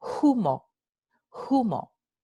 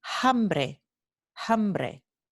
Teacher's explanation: Este fenómeno se llama la aspiración de la H proveniente de la F latina. Ocurre solo en las palabras que originalmente en latín esta H era una F en latín.